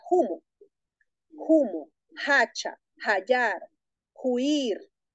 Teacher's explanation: hay una sustitución de la H por la J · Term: H aspirada